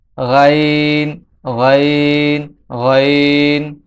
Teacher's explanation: এই হরফটির নাম হচ্ছে গাইন। গাইন হরফটি কণ্ঠনালীর শেষ হইতে উচ্চারিত হয়।